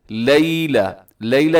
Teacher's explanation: یا لین ہے، یا سے پہلے اگر زیر ہو تو یا مدہ ہوتی ہے، لیکن یہاں یا سے پہلے زبر آ گئی تو یہ یا لین کہلائے گی۔ نرمی سے پڑھنا ہے، مجھول نہیں پڑھنا، لوگ پڑھتے ہیں لیلۃ القدر، لیلہ نہیں ہے بلکہ لیلہ، لیلۃ القدر۔